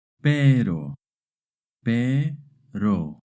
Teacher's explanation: when the R is between two vowels, it makes a short tap R sound.